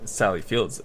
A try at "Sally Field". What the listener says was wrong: Okay, I thought you said Fields. Some people say Fields. There's no S on, There's no S on Fields. Well, there is on Fields, but not on Sally Fields.